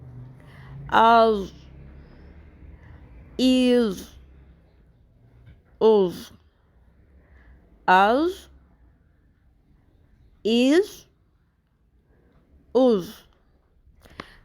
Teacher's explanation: ضاد ایک مکسچر سا ساؤنڈ ہے لیکن یہ پر ہوتی ہے